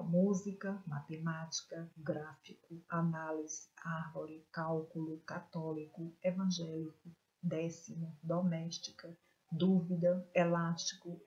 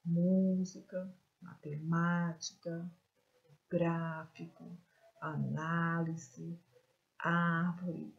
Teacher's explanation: E quando a sílaba forte vier na antepenúltima sílaba, nós chamamos de proparoxítonas